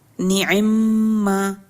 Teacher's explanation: اب اس میں پہلا نعما ما میں پہلا میم جو ہے وہ بھی متحرک ہے اور دوسرا میم بھی متحرک ہے، لیکن اس میں ادغام کے لیے پہلے میم کو خود سے ساکن کیا ہے اور دوسرے میم میں اس کو ملا کے پڑھا ہے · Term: ادغام کبیر